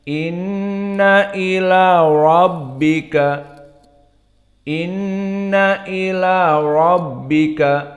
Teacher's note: maka datar kecuali ra dan nunnya musyaddadah mendengung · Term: gunnah